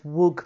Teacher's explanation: we change the d of wood to a g sound ready for the g of green